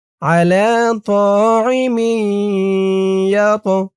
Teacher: ঈদগামে বাগুন্নাহ গুন্না হবে, কারণ তানবিনের পরে ঈদগামে বাগুন্নার ৪ হরফের ১ হরফ ইয়া আসছে তাসদিদ সহকারে।